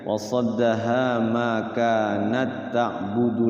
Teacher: Jadi idgham mutamasilain itu sebenarnya tidak berdengung ya.